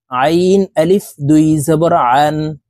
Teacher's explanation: এই আইন হরফকে হালুকের মধ্যখান থেকে চাপ দিয়ে উচ্চারণ করতে হবে কারণ আইনের মাখরাজ হালুকের মধ্যখান থেকে হবে আইন আলিফ দুই জবর